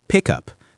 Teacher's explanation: Pick up becomes pick up. The K sound jumps to the next word.